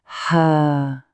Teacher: Alors ça ce n'est pas notre ha muet, pas du tout. C'est un son qu'on expire qui vient du fond de la gorge. Pensez au son que l'on fait pour faire de la buée sur une vitre. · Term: le ha